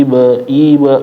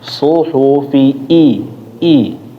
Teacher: Namanya adalah kalau dalam ilmu tajwid itu ditahqiq, yaitu benar-benar diperjelas, jangan nyolong ya, ataupun dipercepat, namanya mencuri harokat, ikhtilas. Suhufi ibe karena sebelumnya fi, habis itu ketemu i ya, jadinya kurang jelas.